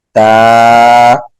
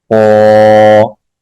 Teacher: اسی طرح تا اور قوا میں فرق کریں گے۔ تا باریک پڑھا جاتا ہے، قوا موٹا پڑھا جاتا ہے۔